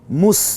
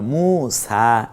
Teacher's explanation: এই জবরটা সহ 1 আলিফ টেনে বলবো